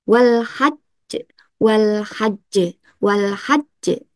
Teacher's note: dibaca dengan cara disukunkan hurufnya tapi ditahan dulu baru kita pantulkan. Jadi ditahan dulu baru dipantulkan. · ada tasdidnya, maka ditahan dulu, baru dipantulkan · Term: qalqalah, huruf qalqalah